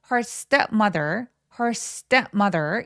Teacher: step mother라는 단어에 강세가 두 번 오죠